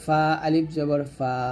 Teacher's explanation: ফা টা উপরে দুই দাঁত নিচে ঠোঁটের পেটে লাগিয়ে উচ্চারণ করবেন